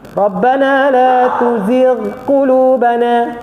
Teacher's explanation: Dan ghin ni ketika mana dia duduk baris bawah dia jadi nipis sedikit.